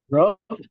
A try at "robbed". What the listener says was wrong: I don't listen to the final sound. Exactly, robbed. Robbed. It's like the como que usted diga una D, pero así.